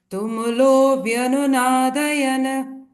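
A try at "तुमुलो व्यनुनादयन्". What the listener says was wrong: Nadayan, no, don't say, because the last na is half, alantana. Vyanunadayan.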